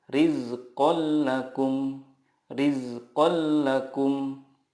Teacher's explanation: meleburkan nun sukun ke huruf berikutnya tanpa gunnah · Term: idgham bila gunnah